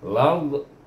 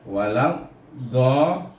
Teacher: daripada mahras lam kita pergi kepada mahras dad, di mana tepi lidah kita pergi ke geraham atas. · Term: idgham syamsi